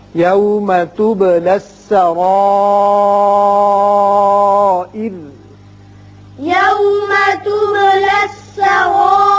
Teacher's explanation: جب وقف کر رہے ہیں تو چونکہ را ساکن ہو جائے گا پیچھے زیر ہے اس صورت میں یہ را باریک ہوگا